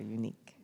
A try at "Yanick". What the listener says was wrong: I'm mispronouncing your name so you say it so you know I'm calling you so it's yan yan yes there we go